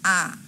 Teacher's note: উচ্চ স্বরধ্বনি হচ্ছে জিভ উপরের দিকে থাকে, আর নিম্ন স্বরধ্বনি হচ্ছে জিভ সবচেয়ে নিচে থাকে। যেমন কি আ, তোমরা যখন উচ্চারণ করবে তখন দেখবা আটা হচ্ছে কোথায় গেল, নিম্নে, অর্থাৎ নিচে চলে গেল জিভ।